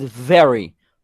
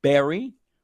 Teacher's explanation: Very instead of berry. B is not B, is V. Labio dental.